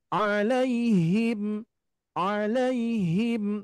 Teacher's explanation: kalau makhrajnya ingin nempel pas di Pangkal itu bunyinya harus ada gemaan sedikit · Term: huruf Ha